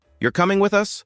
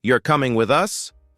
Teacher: with my voice going up at the end, that's a question. But if I say, You're coming with us. with a flat or falling tone, that's more of a statement. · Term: English intonation